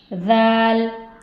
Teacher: दाल अदा होता है ज़बान की नोक सामने के दो दांतों के किनारे से, दाल, इसमें सीटी नहीं आएगी, रॉ, रॉ दो हर्फ से मिलकर बना है, पूर पढ़ेंगे इसे, रॉ, रॉ।